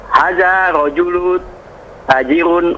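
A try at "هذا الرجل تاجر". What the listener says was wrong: arrajulu itu ada Ro yang harus disambung dengan Dal sebelumnya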